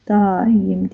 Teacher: Vurğu daim sözündə birinci hecanın üzərinə düşüb. · Keçək izahımıza. Daim sözü daim deyə tələffüz olunur. A uzanır, Y samiti artır. Biz demişdik ki, müxtəlif cinsli qoşa saitlər yanaşı gələrsə, bu zaman Y samiti artırılmalıdır.